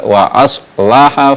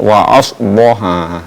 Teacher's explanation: perlu diperjelas ee sifat dari huruf alif yaitu istifal